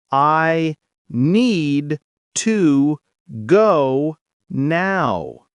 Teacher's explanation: The stress is on need and go.